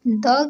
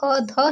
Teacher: द यह हमारा अल्पप्राण है, जो ध ये हमारा महाप्राण।